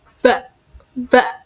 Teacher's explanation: pada huruf ba itu terasa sekali letupannya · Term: qalqalah